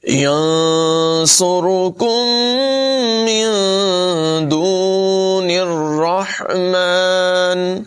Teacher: نون ساکن کے بعد دال حروف اخفا میں سے ہے، یہاں پر بھی اخفا ہوگا، غنہ کر کے پڑھیں گے